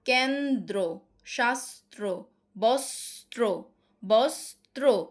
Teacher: শব্দের মধ্যে বা শেষে যুক্ত ব্যঞ্জনের সঙ্গে র ফলা যুক্ত থাকলে কি হবে, দ্বিত্ব উচ্চারণ হবে না।